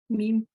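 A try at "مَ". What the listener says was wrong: A meme. Meme with the a vowel, ma.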